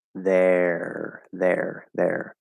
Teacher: so it's voice th plus an r-colored third vowel